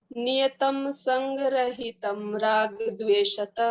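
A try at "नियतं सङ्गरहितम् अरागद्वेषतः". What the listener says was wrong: रहितम अराग हो गया, वो रहितम में हम लोग हलन कर दिए ना, तो उसका जो अ है वो उसको ओमिट नहीं करना, उसको डिलीट नहीं करना है, उसको भी उच्चारण करना है।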